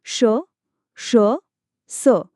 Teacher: उच्चारताना हवेचा मार्ग रोखला जातो आणि त्यातून उष्मता येते श स हे उष्मेवर्ण हे कठोर व्यंजनांतही मोडतात पण त्यांचा घर्षणात्मक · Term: उष्मे व्यंजने